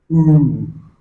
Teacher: The long vowel, long back vowel, and lips are rounded.